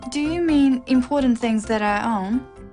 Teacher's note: It's a yes-no question with a rising tone.